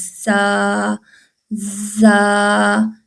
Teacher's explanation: اوپر والے نیچے والے دانت ہیں ان کو بند کریں اور ان کے اندرونی حصے سے زبان کی نوک کو لگائیں